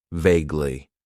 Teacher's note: It has 2 syllables, and the stress is on that first syllable.